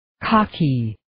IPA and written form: 'kɑːkiː (Kaki)